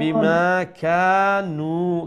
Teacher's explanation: বিমা কানু, কা এক আলিফ লম্বা হবে না, তারপরে নু এক আলিফ লম্বা হবে। ওইখানে কাফের পরে আলিফ মাদ্দা আসছে আর এখানে নুনের পরে ওয়াও মাদ্দা আসছে, তো উভয়টাকে এক এক আলিফ লম্বা করে তিলাওয়াত করতে হবে